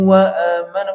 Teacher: tanwin bertemu wau itu dibaca dengung